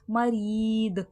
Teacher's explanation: मरीद, री में या मद्दा, या साकिन से पहले ज़ेरे खींच के पढ़ा जाएगा, दाल में खलखले की सिफात वाज़े होगी, आवाज़ पलट कर सुनाई देगी।